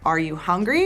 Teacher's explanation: your voice while speaking a good example for this is that for yes or no questions in American English we tend to have a rising intonation at the end of the question